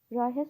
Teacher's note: Rayihə sözündə vurğu sondadır.